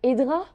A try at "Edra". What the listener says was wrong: c'est pas tout à fait Edra, mais plutôt Eidja. Ça s'écrit Edra, mais prononcé avec un J en plus.